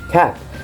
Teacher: the back of the tongue contacts the Vellum entirely blocking the airflow and upon release a birth of sound is produced